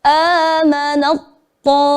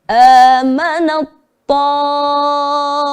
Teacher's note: Jadi taknya seperti hampir tidak ada begitu ya. Hampir. Tapi masih tampak sedikit.